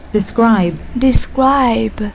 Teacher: Nhấn âm tiết số 2